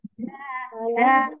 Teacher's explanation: Za dari ujung lidah ke belakang gigi seri bawah ya